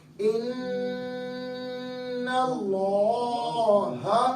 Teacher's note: تو لہٰذا اب اس کی ادائیگی کرتے وقت ہم نے پڑھنا ہے، نون پہ مشدد ہے، غنہ کریں گے، ان اللہ، نون مشدد ہے، ایک الف کی مقدار غنہ ہو